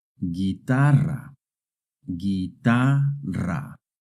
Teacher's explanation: When the G and the U are followed by an E or an I, the U is silent.